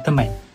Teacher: Akibatnya, perkataan tersebut diucapkan sebagai teman, di mana vokal A menjadi lebih berbunyi nasal atau sengau. Berikutan pengaruh konsonan sengau ma yang terletak di awal dan ne di akhir. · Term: penasalan vokal